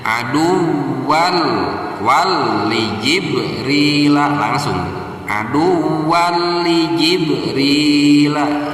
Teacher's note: Nah, ketika kita menemukan nun sukun atau tanwin, nah kebetulan kita di sini menemukan tanwinnya tanwin fathah berhadapan dengan huruf lam, maka cara membacanya harus diidghamkan atau dimasukkan. Yang diidghamkannya itu adalah suara tanwin dimasukkan ke huruf lam. · Nah, tanwin idghamnya itu di sini idgham bila gunnah, yaitu tidak dikasih gunnah.